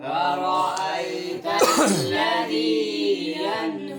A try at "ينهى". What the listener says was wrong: यन पे गुना नहीं होता, यनहा